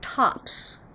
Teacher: what's the last sound in the word tops an s and it is unvoiced